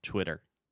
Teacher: when you say it fast, the second T will be a little bit softer